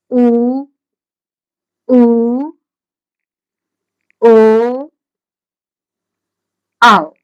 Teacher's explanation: अब जितने आपके स्वर बचे हैं आप पश्चिम में रख देंगे या कहते हैं जीवा के पश्च भाग से इनका उच्चारण होता है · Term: पश्च स्वर